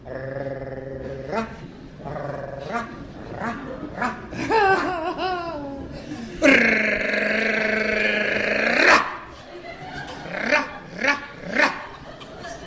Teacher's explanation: Oh, oh, oh. Et l'air en portant le bout de la langue jusqu'au haut du palais, de sorte qu'étant frôlée par l'air qui sort avec force, elle lui cède et revient toujours au même endroit, faisant une manière de tremblement.